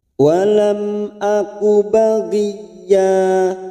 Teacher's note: Mim sukun bertemu hamzah, kita baca jelas tanpa mendengung.